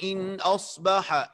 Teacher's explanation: حمزہ کو تحقیق کے ساتھ واضح پڑھنا اور زیر کو معروف.